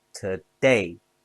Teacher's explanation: Today has two syllables stress on day.